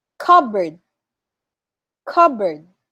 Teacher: so we don't say the letter p